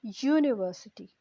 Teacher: The sound that it is producing is not that of a vowel, but of a consonant, of a Y